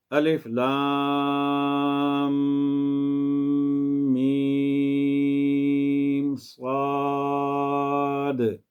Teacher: اس میں صاد آخر میں دال ساکن ہے، تو اس پر قلقلہ بھی میں نے کیا ہے